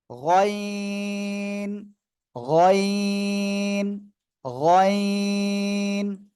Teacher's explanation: এই গয়েন অক্ষর আপনার উচ্চারণ হবে গলার শেষ ভাগ থেকে।